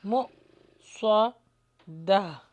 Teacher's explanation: جھٹکا آئے گا کیونکہ حمزہ کے اوپر جزم ہے